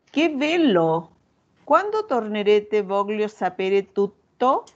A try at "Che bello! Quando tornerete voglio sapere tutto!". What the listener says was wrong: Non è una domanda. No, non è una domanda.